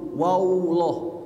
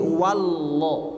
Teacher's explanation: pada kalimat huwallah jangan menambah huruf waw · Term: langsung ke lam